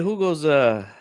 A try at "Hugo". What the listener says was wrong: Mexicano, brother, and you're pronouncing the H? What's wrong with you?